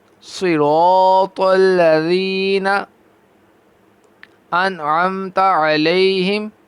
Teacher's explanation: صاد بھی پر، را بھی پر اور تو بھی پر۔ را کو پر کریں گے کیونکہ یہ اس کے اوپر زبر ہے، اور صاد یہ ویسے ہی حروف مستعلیہ میں ہے تو پر پڑا جائے گا، اور تو بھی حروف مستعلیہ میں ہے تو پر پڑا جائے گا، تو یہ تینوں حرف پر پڑے جائیں گے۔